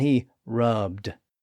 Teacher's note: Since rub ends in a voiced B sound, the past tense suffix ends with a voiced D sound